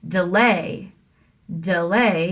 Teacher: you can say the delay really quickly with the duck but you have to stress the lay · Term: iamb